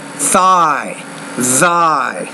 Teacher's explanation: the th the tongues between the teeth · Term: th sound